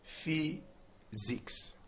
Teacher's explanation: So the S in physics is pronounced as Z.